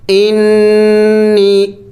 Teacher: نون مشدد ہے، غنہ کرنا ہے